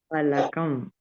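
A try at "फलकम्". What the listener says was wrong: ఫా ఒత్తు పాప పలకాలి. అమ్మా ఫా కాదు, అక్కడ సౌండ్ ఎఫ్ సౌండ్ రాకూడదు, ఫాక్స్ లాగా అనకూడదు. ఫలకం.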